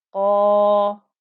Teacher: the qaf is thick and heavy, so the whole of that 2-count stretch is thick and heavy